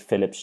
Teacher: Philip ends in the fortis p, so it takes the fortis s.